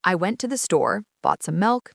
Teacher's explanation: The rising intonation on store and milk act like an acoustic comma.